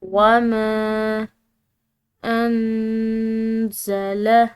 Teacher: نون ساکن ہے، اس کے بعد زا ہے، حروف اخفا میں سے ایک حرف تو اس کی وجہ سے ہم نے اس نون ساکن پر اخفا کرنا ہے